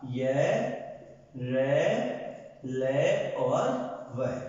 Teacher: जिनका उच्चारण करते समय वाग यंत्र में कहीं पर भी पूर्ण स्पर्श नहीं होता, आंशिक स्पर्श के साथ उच्चारित होते हैं, अर्थात अंदर की अंदर उच्चारित हो जाते हैं, इसलिए इन्हें कहा गया अंतस्थ व्यंजन।